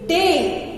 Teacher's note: So this, see, day. We are getting as two vowel sounds, a plus a bit I, hence it is a diphthong.